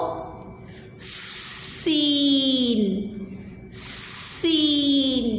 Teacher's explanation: सीन सीन, जैसे सांप की आवाज़ आती है ना। ठीक है, तो बिल्कुल सीन को हमने ऐसे ही पढ़ना होता है, ज़ोर से सीटी की आवाज़ के साथ